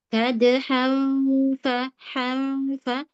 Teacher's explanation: giginya sudah nempel di bibir bawah